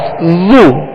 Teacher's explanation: جب پیش ادا کریں گے تو ہونٹوں کو گول کرنا ہے، اسے کھینچنا نہیں ہے، بغیر کھینچے، بغیر جھٹکا دیے معروف پڑھنا ہے۔